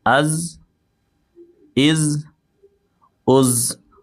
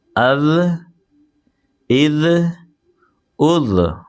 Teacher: از آواز سینٹی والی آ رہی ہے، اور یہاں پر آواز کے اندر نرمی ہوگی. الف حمزہ ذال زبر اذ، حمزہ ذال زیر اذ، حمزہ ذال پیش اذ، اذ اذ اذ.